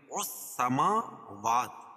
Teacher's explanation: میم اور واو دونوں جگہ کھڑا زبر ہے، کھڑا زبر قائم مقام الف مدہ کے، اس کو ایک الف کے برابر کھینچ کے پڑھیں گے